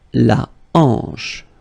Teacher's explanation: H here is not pronounced, so you get the sound en, hanche at the beginning